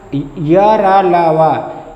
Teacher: ये अंतस्थ व्यंजन सघोष और अल्प प्राण होते हैं।